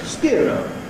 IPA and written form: s.k.ɪə.r.əʊ (Skero)